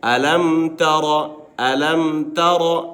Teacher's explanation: نو دا ولې غټ ویلی کېږي ځکه چې په را باندې زبر دی کله چې په را باندې زبر راشي پیش راشي دو زبر